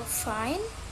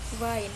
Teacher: Next, we have F and V. F is a voiceless labiodental fricative. V is a voiced labiodental fricative.